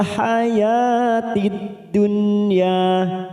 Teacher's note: haya fathah berdiri 2 harokat